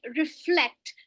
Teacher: So flect is where we are sounding it more strongly. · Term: stress